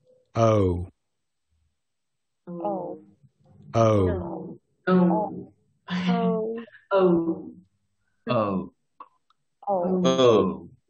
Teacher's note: Es un diptongo. Es un sonido diptongo. Se está produciendo dos sonidos vocálicos simultáneos.